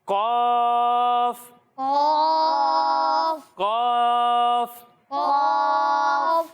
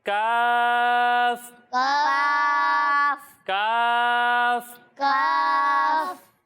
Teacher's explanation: جب ہم قوف کی ادائیگی کریں گے تو اسے موٹا پڑھیں گے کیونکہ قوف حروف مستعلیہ میں سے ہے، اور جب ہم کاف کی ادائیگی کریں گے تو اسے ہم باریک پڑھیں گے